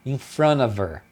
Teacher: porque eles tiram o H, aí eles mantêm o V aqui, o som do V, e emenda como ver, in front of her.